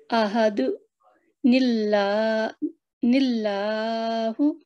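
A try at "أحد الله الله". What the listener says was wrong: जी, वक्फा नहीं होना चाहिए, जब वसल करना है तो फिर वक्फा नहीं होना चाहिए, आहादु निल्ला निल्लाहु,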